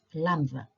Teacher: Lambda is wrong because we don't have a D sound when we say lambda. So I suggest you replace it with a TH